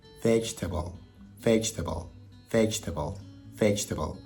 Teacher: we only say 3 syllables, and I know the word actually has 4. So you don't want to say vegetable.